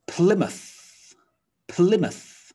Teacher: all right plymouth plymouth so the m-o-u-t-h sound looks like and sounds like mouth but in a town name it's reduced down to muth